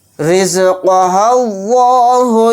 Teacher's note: لام زبر ال، لام کھڑا زبر لا، اللہ پیش ہو، اللہ، تو یہاں پر دیکھیں لفظ اللہ کے لام کو موٹا یعنی پر پڑھیں گے، کیونکہ لفظ اللہ کے لام سے پہلے زبر ہے۔